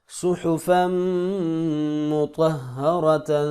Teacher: وقف کی صورت میں تا ساکن ہوگی اور ہا میں کنورٹ ہو جائے گی